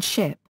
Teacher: a voiceless postalveolar fricative /ʃ/ (as in 'ship')